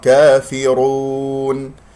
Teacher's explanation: كافرون في كسرة الفاء جيدا، ثم الراء مفخمة لأنها مضمومة، واقرأ الراء جيدا لا تكررها